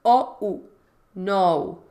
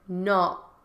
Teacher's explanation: And no is really 2 vowel sounds.